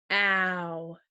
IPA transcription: ou